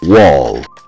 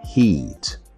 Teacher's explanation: With a labiovelar approximant, they produce the sound through the lips, rounded. The tongue hum rises towards the velar while air escapes through the opening in the mouth.